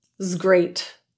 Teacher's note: the Zed or voiced Z sound in was links to Great